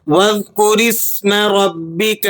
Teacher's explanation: یہ را آپ نے پر کر کے ادا کرنی ہے بوجہ زبر کے، اور با مشدد ہے تو مشدد حرف کو سختی کے ساتھ پڑھا جاتا ہے۔